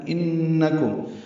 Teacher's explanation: نون مشدد پہ غنہ ہے، آواز ناک کے بانسے میں جائیں گے